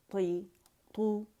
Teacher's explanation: اطباق اس letter میں طا میں اس میں بھی پیالہ بنتی ہے لیکن اس میں زبان تالو سے لپٹ جائے گی، اس میں تالو سے نہیں لپٹے گی، ٹھیک ہے.